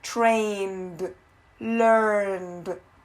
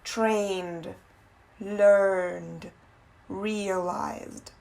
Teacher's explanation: A gente não pronuncia muito o E, a gente pronuncia mais o D.